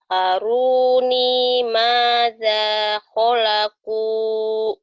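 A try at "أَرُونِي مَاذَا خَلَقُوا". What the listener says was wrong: Dza khalaqu. Ulangin ho-nya.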